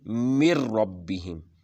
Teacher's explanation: نون کی جو آواز ہے اس کو بالکل نون کو پڑھیں گے بھی نہیں، اور اس میں بغیر غنہ کے اس کو پڑھ دیں گے، میم کو ڈائریکٹ را کے ساتھ ملا کے۔ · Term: ادغام بلا غنہ